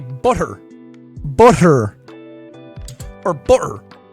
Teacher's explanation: The thing about an Irish accent is that some of the T's are an SH sound